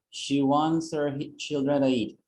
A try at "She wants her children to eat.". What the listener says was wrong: Can you see that? You have a perfect pronunciation.